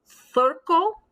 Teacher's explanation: if you use a spanish accent with a soft c it sounds like the th th sound and this is only before e or i